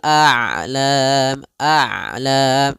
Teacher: Ain itu kedua-duanya tidak terlalu dialirkan, tidak terlalu ditahan suaranya. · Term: sifat bainiah